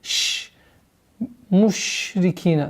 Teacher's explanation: У звука шин, отличительно от остальных звуков, есть свойство, называется тафаши.